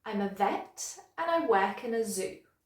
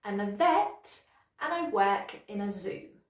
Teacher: So you can hear that those words, vet, work, and zoo, are a bit stronger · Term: sentence stress